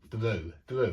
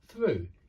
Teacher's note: you don't ring your vocal chords at the start with through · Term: voiceless th